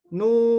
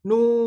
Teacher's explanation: Kita contohkan misalkan huruf nu. Nu kita panjangkan sampai 6 harokat atau sepanjang-panjangnya, karena huruf mad ini secara asal tidak ada batasannya. Ya, karena batasan mad ini, bunyi mad ini batasannya adalah ya napas kita habis atau tidak.